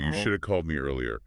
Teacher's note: The have just reduces to the schwa vowel sound. Uh, this is called elion, the dropping of sounds.